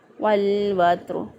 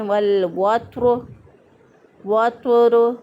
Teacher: والوتر میں تا کو بعض لوگ تو سے بدل دیتے ہیں والوتر، وتر، غلط ہو جائے گا، درست ادائیگی ہے والوتر واللیل اذا یسر۔